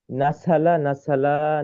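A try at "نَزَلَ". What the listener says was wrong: নাসালা বলছো কেন? নাজালা ঝানা।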